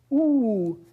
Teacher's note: oo is a high back rounded tense vowel. And if you go back and forth between oo and the idea is basically what you're doing is relaxing.